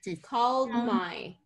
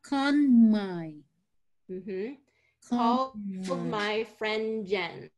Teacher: So we're kind of going to that D sound. We're putting the D in position, but we're not really releasing it. We're releasing into the M.